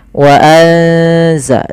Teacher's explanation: Suara nunnya disamarkan ke zai. Wa anza sambil ditahan bacaan eng-nya atau bacaan gunnah ikhfa ya, dengungannya. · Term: bacaan ikhfa